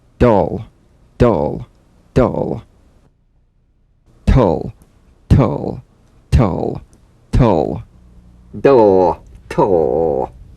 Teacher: off the gum ridge and return there immediately for the l feel the typical drum beat damped in the tip of the tongue as the d or t click slides quickly into the l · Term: dl and tl